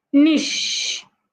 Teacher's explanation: The ch in that word sounds like sh. Remember, we had said earlier that sometimes when you have a word with ch, it will sound like sh if it's from French.